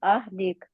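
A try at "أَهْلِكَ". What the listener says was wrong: आहल होता है, अहल नहीं होता।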